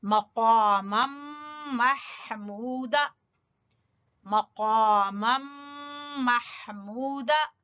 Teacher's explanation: قاف کو موٹا پڑھیں گے زبان کی جڑ سے